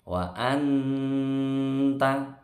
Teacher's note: nun sukun di sini dibaca dengung karena ketemu ta, itu bacaan ikhfa hakiki.